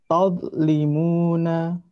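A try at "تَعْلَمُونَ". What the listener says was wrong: Untuk bacaan yang terakhir tadi terdengar oleh saya memantul ya. Jadi memantul itu berarti ini lidah yang terangkat ini terlalu cepat diturunkan atau ujung lidah ketika nempel di sini di ujung gigi seri terlalu cepat dilepas. Jadi tahan dulu sebentar.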